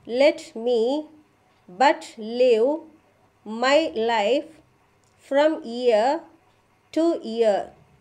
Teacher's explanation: this sentence is divided into 10 syllables. Every short syllable is followed by long syllable.